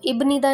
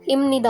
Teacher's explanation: अब ब से फॉलो अप कौन सा कर रहा है, न कर रहा है, तो रूल के अकॉर्डिंग अगर न या म आ रहा है भ या फ पे, तो वो म साउंड करेगा, तो इब्निदा नहीं होगा, इमनिदा होगा प्रोनाउंस करते टाइम।